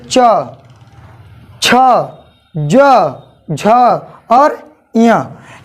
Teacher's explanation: देखिए आपका जीभ जो है, जिह्वा जो है वो तालु को टच करेगा। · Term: तालव्य